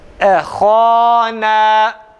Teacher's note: Ehana. Burada yine ha ile na birbirine zıt. Ha isti'la ve tefhim ve isti'la, na ise terkik ve istifal, birbirine zıt. Yukarı aşağı, kalın ve ince.